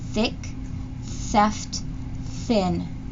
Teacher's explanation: Your throat doesn't vibrate. So that means that this is an unvoiced sound.